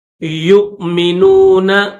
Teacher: تو یاد رکھنا، یہاں پر جو نیچے واو ہے اس واو کو نہیں پڑھیں گے، اوپر جو حمزہ ہے اس حمزہ کو پڑھا جائے گا اور جھٹکے کے ساتھ پڑھیں گے۔ یؤمنون اس طرح، لا تجد قوما یؤمنون باللہ، با کو لفظ اللہ کے ساتھ ملائیں گے۔